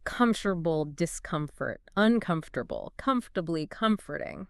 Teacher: the stress remains on that first syllable just like in the root word Comfort it's like the stress is loyal to its Origins so the